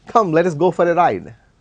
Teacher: rising tune out of enthusiasm